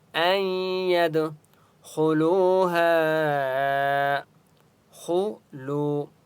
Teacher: خا مستعلیہ میں سے اس لیے خا کو موٹا پڑھیں گے